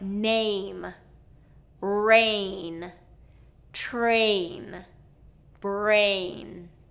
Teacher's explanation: that long a sound before a nasal so words like name rain okay these need that full movement and the N okay so let's take a sentence from one of my favorite